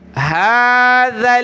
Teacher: جب رکیں گے وقف کریں گے تو هذا, یہ ذل نہیں ہے, زا نہیں ہے, ذال پر زبان نکالیں